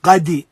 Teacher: Having to be, again, to be careful when we recite the qalqala, not to make the qalqala into a haraka. And some people overemphasize the qalqala and it becomes a haraka, it becomes a fatha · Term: overemphasis of qalqala